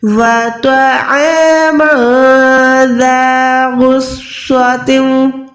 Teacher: मीम दो ज़बर के बाद ज़ाल है, यहाँ पर मीम को छुपाएंगे, इक्फा करेंगे। व तअमन ज़ा गुस्सतिन, गईन मोटा हरूफ है, स्वाद मोटा हरूफ है।